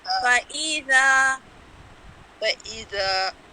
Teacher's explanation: اب جو ذا ہے نا اس کو بہت لمبا نہیں کرنا، ایک الف کے برابر